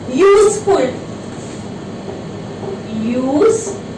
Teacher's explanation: Now again sound is of y, although it is beginning with U